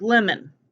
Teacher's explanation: the first syllable is the accented syllable and the vowel takes the short vowel sound